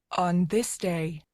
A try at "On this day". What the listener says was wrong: On this day, there's a little hesitation in there. Make sure that first impression, that first word nails it. On this day. Big difference there. So where she kind of had an upswing on this day, I would have directed a voice actor to come in with even some emphasis on that first word.